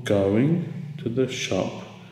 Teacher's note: go is stressed and Shop is stressed we learn about go is stressed because it's a main verb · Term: stresses